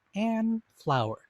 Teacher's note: notice how that n and that f sort of butt up against each other they they uh impede each other see how awkward that is